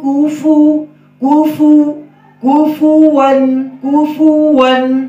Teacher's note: واو میں ہونٹ گول ہوں گے